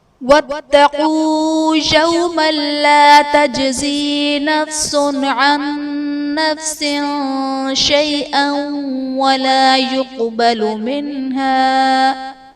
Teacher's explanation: تجزی میں جیم حرف قلقلہ ساکن ہے تو یہاں پر قلقلہ خوب ظاہر کریں گے۔